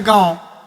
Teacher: ऐसे स्वरों का उच्चारण जो है नाक और मुंह से होता है